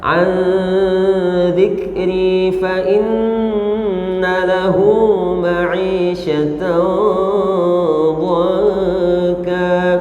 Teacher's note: Nun mati ketemu za, hukumnya apa? Ikhfa ya. Ditahan.